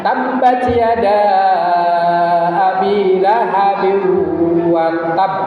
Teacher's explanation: Ba itu kan ada ba-nya double. Tabba itu ba-nya double, ada syiddah terakhirnya.